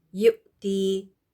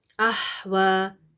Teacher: حمزہ کو پروناؤنس کرتے ہوئے کوئی ہوا نہیں آنی چاہیے ساتھ، ٹھیک ہے، لیکن ہا کو پروناؤنس کرتے ہوئے ہوا ہونی چاہیے. اور دوسری بات، حمزہ ساکن پر جھٹکا دے کر پڑھیں گے جبکہ ہا کو نرمی کے ساتھ پڑھیں گے.